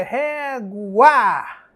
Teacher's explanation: esse a ele não se apaga como aquele I da palavra pai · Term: ditongo